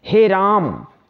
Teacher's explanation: कहीं हे राम जब कह रहे हैं ना तो हम लोग हस्व स्वर की तुलना में इससे तिगुना समय लगा रहे हैं हम बोलने में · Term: पुलत स्वर